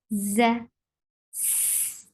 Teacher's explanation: There should be a buzzing sound in za, za, z. This sound should be there.